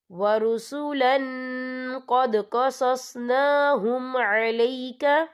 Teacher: یہ دیکھیں ورسولن، لام کے پر تنوین ہے، تنوین کے بعد جو ہے قوف آ رہا ہے، اور قوف جو ہے اکفا کا ورڈ ہے تو ہم یہاں اکفا کریں گے، تنوین کی آواز کو ناک میں چھپائیں گے